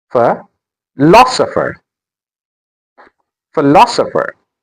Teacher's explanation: The stress is on lo.